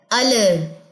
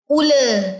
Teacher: ہم نے زبان کی نوک کا استعمال کیا، زبان کے کناروں کا استعمال نہیں کیا